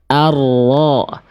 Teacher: Jadi ujung lidahnya enggak nempel. Yang nempel tuh punggung lidahnya